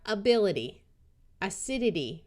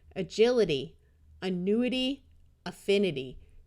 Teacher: Did you notice how all of these A's sounded more like short U's? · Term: schwa